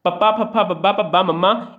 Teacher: ਸਾਡੇ ਜਿਹੜੇ ਦੋਨੇ ਬੁੱਲ ਨੇ ਉਹ ਆਪਸ 'ਚ ਜੁੜ ਜਾਂਦੇ ਨੇ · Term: ਹੋਠੀ ਧੁਨੀਆਂ